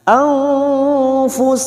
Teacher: Anfu ini juga yang disebut dengan ikfa ausat. Anfusihim Mim sukun dibaca jelas karena bertemu waw, dibaca jelas tanpa mendengung, idhar safawi